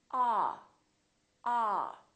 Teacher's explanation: at is the a sound repeat after me a a so your jaw is all the way down and your lips are kind of oval shaped like an egg a don't push your lips forward too much don't say oh